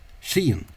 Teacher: the lenited S, the softened S, has become a H sound, and the softened R has become a slender tap